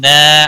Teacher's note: الف مدہ ہے ایک الف کے برابر کھینچ کر پڑھیں گے